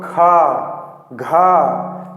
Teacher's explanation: लेकिन जब महाप्राण ध्वनि है, जैसे महाप्राण में क्या है, दूसरा और चौथा, ये दूसरा और चौथा ये हमारा क्या है, महाप्राण है। तो खा, घा, तो इसमें क्या है, ज़्यादा हवा निकलती है